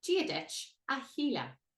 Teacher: Again, this H, which you will come to learn is very special in Irish, changes the pronunciation. So we nearly ignore the S and start with the H.